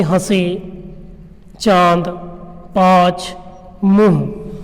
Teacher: जिन्हें बोलते समय हमारी जो ध्वनियाँ हैं वो नाक से निकलती हैं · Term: अनुनासिक ध्वनियाँ